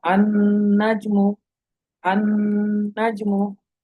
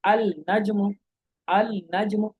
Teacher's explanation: लेकिन लाम को नहीं पढ़ा जा रहा, बल्कि डायरेक्ट हमजा को नून से मिलाया जा रहा है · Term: लाम का इदगाम